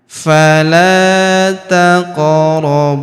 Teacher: Taq. Huruf bu kita panjangkan dua harakat karena wau sukun di depannya